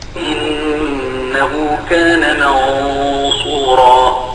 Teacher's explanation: هذه الغنة بتتبع ما بعدها، الصاد خلت الغنة فخمة